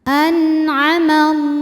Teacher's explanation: Jadi ini adalah huruf tenggorokan. Maka nun sukun masih dibunyikan dengan jelas, artinya masih bunyi asalnya n dan tidak ditahan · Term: izhar halqi